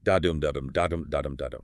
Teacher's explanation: characterized by an alternating pattern of unstressed and stressed syllables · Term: iambic pentameter